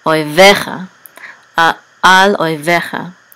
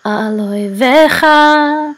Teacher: etnachta, so the accent is on ve, oi vecha, al oi vecha, and this means your enemies.